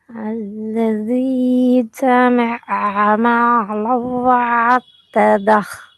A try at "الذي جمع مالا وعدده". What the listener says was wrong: மாலவ் அல்ல, மீம்ல ஐன உச்சரிக்க வேணாம், அதை நோமலா உச்சரிக்கும். மேலவு நோமலா ஓதுங்க. போகக்கூடாது, நீட்டக்கூடாது.